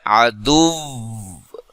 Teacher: وہاں جب آپ نے وقف کرنا ہے تو ساکن کرنا ہے، ساکن کرنے کے ساتھ ساتھ اس آخری حرف پر 2 حرف کی دیر لگا کر پڑھنا ہے